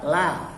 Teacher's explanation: ya lamnya dibaca tipis. Kenapa? Karena lamnya bukan terdapat pada kata Allah.